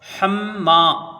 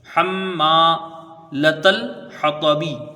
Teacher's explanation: حَمَّالَةَ الْحَطَبِ، حَمَّا، ہا کو میم سے ملائیں گے، میم مشدد ہے، ایک الف کی مقدار غنہ ہوگا، میم کو ایک الف کے برابر کھینچ کے پڑھیں گے، الف مدہ ہے۔